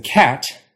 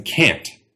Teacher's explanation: English actually uses nasal vowels right before we say words that end with an N or an M